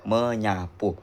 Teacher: Ah, jika bertemu dengan prefix eh men atau pen eh contohnya yaitu men ditambah sapu menjadi menyapu. Eh, fonem s luluh pada n menjadi n atau ny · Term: peluluhan fonem